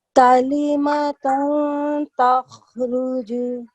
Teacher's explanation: It's ta, which is a ikhfa letter. Okay, so we will hide the sound of the noon that we have in the middle when we're reciting this.